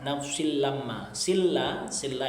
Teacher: antara lam dan ro, maka membacanya masuk dengan tanpa mendengung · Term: idgham bila ghunah